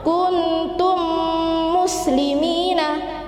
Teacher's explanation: Jadi mim dan mim yaitu harus dimasukkan dan menengung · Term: idgham mimmi